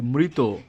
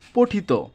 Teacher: তৈত প্রত্যয়ন্ত শব্দের অন্ত অ এর উচ্চারণ ও এর মত হবে